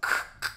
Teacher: on the k, your tongue is kind of bending back and hitting the roof of your mouth. K, and you're getting that really strong sound. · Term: K sounds